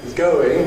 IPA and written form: ˈgəʊɪŋ (going)